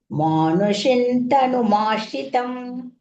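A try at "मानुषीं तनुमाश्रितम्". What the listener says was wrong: Shin, dirgha.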